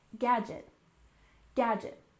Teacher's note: we stressed the first syllable